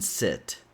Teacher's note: the i sound is a more relaxed sound, so your tongue is more relaxed. If you try to really push your tongue up, you're going to end up pronouncing the e sound, which is not the sound we want.